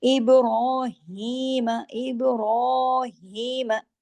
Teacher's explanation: रा पे खड़ी जबर है, रा को हैवी भी पढ़ेंगे, 2 हरकत खींचेंगे